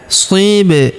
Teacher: Huruf ba berharakat sukun. Kita pantulkan atau kita qalqalahkan.